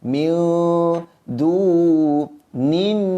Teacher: Bila nin, yang ni disebut nin, nun baris bawah bertemu dengan nun sabdu baris atas, maka kena dengung dengan kadar dua harakat.